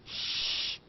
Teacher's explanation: Crash shh, is voiceless. It is a voiceless sound. It has no vibration.